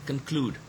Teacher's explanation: Look at this word, conclude. The second syllable is stressed.